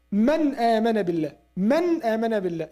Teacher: You stress on noon, You give it like its manifestation or إظهار.